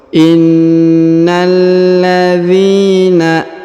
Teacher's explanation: Huruf dhi dipanjangkan 2 harokat karena di depannya terdapat ya sukun.